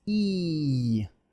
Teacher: Beat is long because it's tensed. So the tongue is a muscle, and so it can be tensed or relaxed.